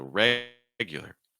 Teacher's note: Regulars, in terms of stress patterns, it has a heavy stress followed by two weaker stresses.